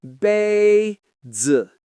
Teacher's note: The first syllable stays high and the second falls quickly. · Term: first and fourth tone